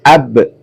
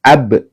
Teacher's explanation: huruf ba yang disukun ya, maka dibaca memantul. Ab ya. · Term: qalqalah